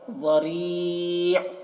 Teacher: ज़ाद को भी पूर पढ़ रहे हैं और रा को बारीक पढ़ रहे हैं